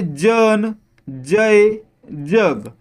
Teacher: जन जय जग यामध्ये ज चा उच्चार य जोडल्यासारखा म्हणजे ज असा होत म्हणजे काय झाले ते ताल्लव्य झाले आणि